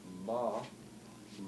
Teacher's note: But your al-an is forward, it's open, and it's acting like a valve in order to let the air come out through your nasal chamber. And what makes M sound different from B is that M has the nasal chamber coloring the sound, whereas B has no nasal chamber. M and B are exactly the same keys, except for one has the al-an open, the M, and the B has the al-an closed and back there.